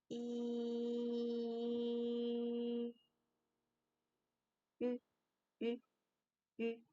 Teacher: Firstly, make the E sound, and then gradually, slowly round our lips. E, ü, ü. Okay.